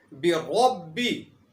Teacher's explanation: بربی کے اندر را کے اوپر زبر ہے، اس لیے یہاں پر را کو موٹا پڑھا جائے گا